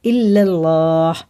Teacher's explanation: یہ لام بھی پر ہے اللہ کا، اور باقی سارے لام باریکی ہوتے ہیں